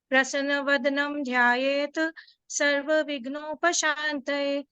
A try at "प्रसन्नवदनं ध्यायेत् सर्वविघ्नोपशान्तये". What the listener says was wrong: प्रसन्न, थोड़ा उच्चारण में बेटा हलंत किए, थोड़ा उच्चारण में हलंत का पूरा पूरा शब्द बोले आप। प्रसन्न वदनम ध्यायेत् सर्व विघ्नोपशान्तये।